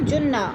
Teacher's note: جن کی نون مشدد ہے, سختی سے جمع کر پڑھیں گے